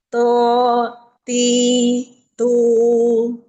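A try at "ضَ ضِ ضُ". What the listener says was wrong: Tuh, kok jadi to di bagian tepi lidah aqsal hafa sampai adanal hafa ditempelin pada ujung gigi geraham bagian dalam. Masih bocor. Istilah sudah, tapi belum idbaq. Jadi bagian permukaan lidah belum melekat ke langit-langit. Makhrajnya enggak ke huruf dha, enggak ke makhraj dot. Nah, ini makhrajnya belum. Jadi bagian aksal hafa itu bagian tepi lidah yang bagian dalam.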